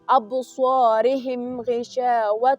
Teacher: ابصارهم غشاوة د میم ساکن نه بعد غین راغلی، د اظهار حروف راغلی، باید تیز ووایو. او دلته غین ډکه لوستل کیږي، هم تفخیم هم ادا کیږي